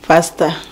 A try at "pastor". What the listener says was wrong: Where is the O? Where is the O? Pasta. Pasta. For us, it's pasta. Pasta.